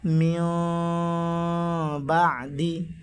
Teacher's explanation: দুই ঠোঁট সামান্য পরিমাণ ফাঁক রেখে উচ্চারণ করতে হবে মিও, আর গুণনা করতে হবে প্রায় 3 আলিফ পর্যন্ত